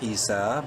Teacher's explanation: الف مدہ ہے، سین کو 1 الف کے برابر لمبا کریں گے